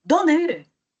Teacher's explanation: La mayor fuerza de voz siempre va a radicar en el pronombre interrogativo. Por eso es que son de tono descendente, porque la mayor cúspide está justamente en el pronombre interrogativo.